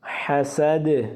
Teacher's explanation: دال ساکن ہے، یہ حروف قلقلہ میں سے ہے اس لیے ادھر آواز کو ہلائیں گے